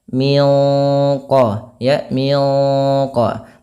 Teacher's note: Nah, sama sebagaimana yang awal, yaitu ada bacaan ikhfa hakiki. Kita bacanya nunnya disamarkan langsung ke huruf qaf yang dia menebal.